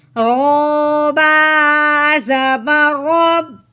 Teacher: رو کے اوپر زبر ہو یا رو کے اوپر پیش ہو تو اس رو کو موٹا کرتے ہیں